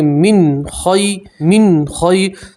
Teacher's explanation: نون ساکن میں آپ گننا نہیں کریں گے، نون ساکن کو آپ ظاہر کر کے پڑھیں گے، صاف پڑھیں گے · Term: نون ساکن کا اظہار